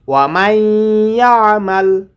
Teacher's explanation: ইয়ারাহু ওয়া মান ইয়ামাল মিসকালা যাররাতিন শাররান ইয়ারাহ ওয়া মান ইয়ামাল এখানে নুন সাকিনের পরে ইদগামে বাগুনার হরফ এসেছে এজন্য গুণনা করতে হবে